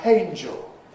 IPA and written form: ˈheɪnʤl (angel)